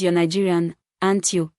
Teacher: Upright arrow tag questions, expecting agreement, when the statement is positive. The tag rises